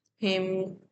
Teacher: تو میم، ہم، میم ساکن ہے، ہونٹ بند ہوئے، ایک مختصر وقفہ تقریباً 1 فنگر ہوتا ہے، لیکن اس میں غنہ نہیں ہوتا ہے، صرف میم کی آواز کو ہم روکتے ہیں.